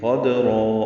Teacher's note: کی وجہ سے، قاف پر ہے، دال ساکن پہ قلقلہ ہے، را پر ہے اور یہ وقفاً مد عوض ہو جائے گی، قدرا دو حرکات لمبا کریں گے